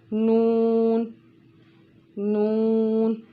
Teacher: जब आप इसको ऐसे लंबा करके पढ़ेंगे तो आप देखेंगे, नोटिस करेंगे कि आपकी नोज़ में एक वाइब्रेशन हो रही है, एक आवाज़ गूंज रही है। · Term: हरूफ़े गुन्ना